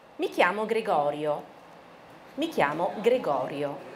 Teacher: 还有那个肯定句的语调，对不对？从中间往下哈